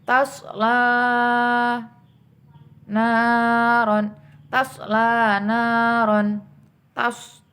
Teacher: So-nya membacanya dengan bibir agak monyong.